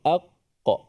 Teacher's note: Suara kita tertahan, terputus, suara tak bunyi lah, dia putus pada makhraj tu. · Hamzahnya la yu mu'minin, terputus suaranya. Qaf, aq, sebelum qalqalah tu suara tu terputus dulu. Aqqa, baru ada qalqalah tu. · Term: huruf syiddah